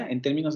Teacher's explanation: se darán cuenta que el mayor peso al principio de la frase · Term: exclamativos